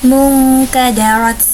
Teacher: nun sukun bertemu dengan Kaf maka dinamakan ikhfa dan dibaca dengan samar-samar